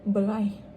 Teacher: mereka menukarkan perkataan S itu kepada IH. Ini adalah salah satu penggunaan dialek Kedah